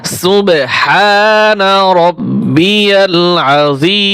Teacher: সিন বা পেশ সুব, এখানে কলকলা উচ্চারণ হবে